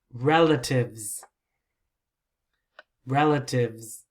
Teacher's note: just the z sound right but you don't hear s sound